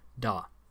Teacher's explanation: In modern Tibetan, it is pronounced as a low-tone, unaspirated da.